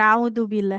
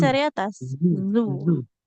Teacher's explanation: Huruf zal ujung lidah ke ujung gigi